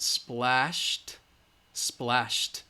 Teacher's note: Shh is voiceless so we use the T sound